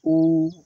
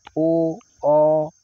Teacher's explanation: तो देखिए कैसे जैसे छोटा उ बड़ा उ ओ ओ औ इनको बोलते समय हमारा जो है मुख यानी होठ गोल हो जाएंगे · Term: वृत्ताकार स्वर